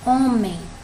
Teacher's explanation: tem uma palavra homem né o mais forte a sílaba mais forte é o ó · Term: sílaba tônica